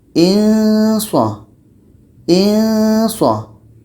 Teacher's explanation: Ketika sebut tanwin ini kita sudah merasakan huruf so. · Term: samar